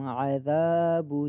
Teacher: عین گلے کے درمیان سے ادا ہوگا، عذابو کو با جو ہے اس کو نہیں کھینچنا، اور ذال کو ایک الف کی مقدار کھینچیں گے۔